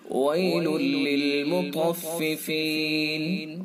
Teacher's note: طا کو پر کر کے پڑھیں گے، چونکہ حروف مستعلیہ میں